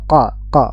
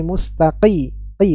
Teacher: dia lebih ke belakang dan dia pangkal lidahnya naik tebal